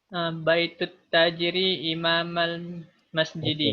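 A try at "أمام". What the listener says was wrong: Imam, not imam, amam.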